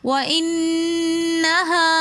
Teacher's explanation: وَإِنَّهَا میں الف مدہ ہونے کی وجہ سے ہم نے وَإِنَّهَا ایک الف کی مقدار کھینچ کر پڑھا